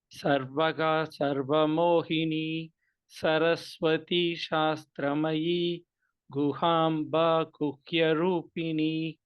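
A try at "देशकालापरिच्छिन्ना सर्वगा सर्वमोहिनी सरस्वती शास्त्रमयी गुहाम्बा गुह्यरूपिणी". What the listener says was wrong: Just a small observation. Where, see, in some places you're chanting the dirgha correctly. In some places you're making it little shorter. For example, Deshakala parichinna sarvaga sarvamohini saraswati shastramayi guhamba guhyarupini.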